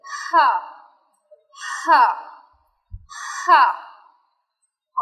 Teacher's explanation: जब हम हा की अदायगी करते हैं तो हा के साउंड के साथ साथ यानी कि शुरू में हवा भी हमारे मुंह से निकलती है। हा, जिस तरह सांस निकलता है, हा हा हा, आइन हा।